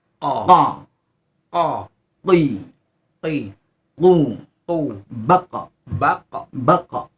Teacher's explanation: Hati-hati jangan ada desnya karena tidak hamus di sini. Tidak berdesis. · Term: qaf